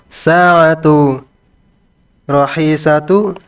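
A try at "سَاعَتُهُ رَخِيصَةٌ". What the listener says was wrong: Sa'atuhu rakhisatun. Ini kan sudah titik ya. Jadi intonasinya turun. Sa'atuhu rakhisatun, itu namanya orang lagi nanya. Ya, ini kan lagi pernyataan ya. Intonasinya titik begitu. Sa'atuhu rakhisatun.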